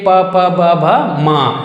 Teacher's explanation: ओष्ठ अर्थात ओठ, ओठ को बोला जाता है उ और प वर्ग, प वर्ग को बोल के देखिए, प फ ब भ म, दोनों ओठ टकरा रहा है, तो इस तरह से इसे ओष्ठ वर्ण कहा जाता है।